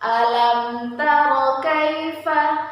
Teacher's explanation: mim sukun bertemu dengan huruf ta maka disebut dengan izhar syafawi dan dibaca jelas di bibir